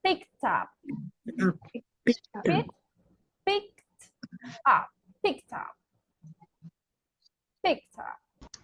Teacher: Ah, we have a T, right? And what is the next sound? Up. So we can link it. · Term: link the sounds